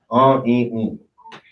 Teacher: it's a nasal sound, so you're not saying the N sound